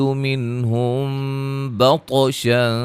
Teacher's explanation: طا کو موٹا ادا کریں گے، قلقلہ کریں گے، ہلا کے پڑھیں گے